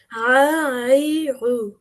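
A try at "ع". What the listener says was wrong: না, এটা তো গয়নের মতো উচ্চারণ হয়ে যাচ্ছে। গয়নের উচ্চারণের জায়গা আলাদা, হ্যাঁ। আর আইন আর ওয়াইন দুইটা কিন্তু দুই জায়গা থেকে প্রনাউন্স হয়। তো তুমি যদি এর মতো সাউন্ড করে ফেলো, বুঝতে হবে যে তোমার প্রনাউন্সিয়েশনের জায়গাটা চেঞ্জ হয়ে গেছে।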